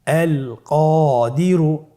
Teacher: কফের পরে আলিফ হরফটি এসেছে, তাহলে আলিফ হরফটিকে মোটা করে পড়তে হবে